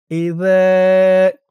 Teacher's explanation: আর জালের উচ্চারণটা নরম হবে। জিহ্বার মাথা উপরের দুই দাঁতের মাথার সাথে লাগবে।